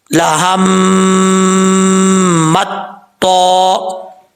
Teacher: تا کیونکہ باریک پڑھا جاتا ہے، ہم نے اس کو باریک پڑھنا ہے، پھر تو کو پر پڑھنا ہے، موٹا پڑھنا ہے. تو حروف مستعلیہ میں سے ہے، جب تک زبان اوپر کی طرف نہیں اٹھے گی تب تک یہ تو جو ہے وہ پر نہیں پڑھا جائے گا.